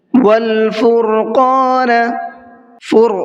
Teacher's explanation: را کو منہ بھر کے پڑھنا ہے اور قاف کو بھی منہ بھر کے پڑھنا ہے